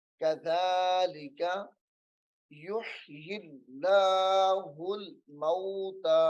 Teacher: اس میں جلالت اللہ کے لام کو باریک کر کے پڑھنا ہے، موٹا نہیں ہوگا کیونکہ اس سے پہلے زیر ہے حرف کے نیچے